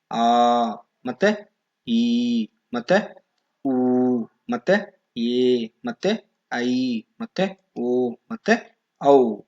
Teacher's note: ಸೊ ಇವೆಲ್ಲವೂ ಸೇರಿದ್ರೆ ಒಟ್ಟು 7ರಷ್ಟು ದೀರ್ಘ ಸ್ವರಗಳಿವೆ. ಸೊ ಇವನ್ನ ನಾವು 2 ಮಾತ್ರೆಗಳ ಕಾಲ ಅಂದ್ರೆ ಇಲ್ಲಿ ದೀರ್ಘವಾಗಿ ನಾವು ಸ್ವರಗಳನ್ನ ಉಚ್ಚರಿಸ್ತೇವೆ. ಸೊ ಇಲ್ಲಿ ಅ ಅನ್ನೋದಿಲ್ಲ, ಮತ್ತೆ ಇಲ್ಲಿ ಆ ಅಂತ ದೀರ್ಘವಾಗಿ ಸ್ವರಗಳನ್ನ ಉಚ್ಚಾರಣೆ ಮಾಡುವುದಕ್ಕೆ ದೀರ್ಘ ಸ್ವರಗಳು ಅಂತ ಕರಿತೇವೆ.